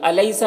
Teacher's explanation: الیسا، یہاں پر یالین ہے، اسے نرم آواز کے ساتھ جلد پڑھیں گے